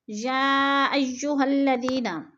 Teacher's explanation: یا پہ مد متصل ہے، 4 الفی مد ہے، 4 الف کے برابر ہم نے اس کو کھینچ کر پڑھنا ہے